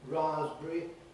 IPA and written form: ˈrɑːzbri (raspberry)